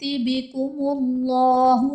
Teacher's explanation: بکم اللہ میں اسم جلالت اللہ عز و جل کے لام سے پہلے پیش آ رہا ہے تو یہاں پر اسم جلالت اللہ عز و جل کے لام کو پر یعنی موٹا پڑھیں گے